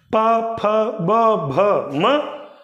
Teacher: ओष्ठ को क्या कर रहे हैं? स्पर्श, दोनों ओष्ठ छू रहे हैं